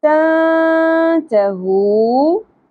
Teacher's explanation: اخفا مع الغنہ ہوگا، یعنی کہ ہم نے نون ساکن کی آواز کو چھپانا ہے اور غنہ بھی کرنا ہے